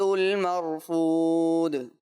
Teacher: آخر میں دال کلکلا ہوا ہے، اور اچھے انداز سے کلکلا کریں، واضح کریں